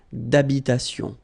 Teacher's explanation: H doesn't exist in French, well, in most of the cases. So it does mean that you don't pronounce it.